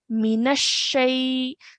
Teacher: we're really really emphasizing pressing down on the sheen when we join it to the noon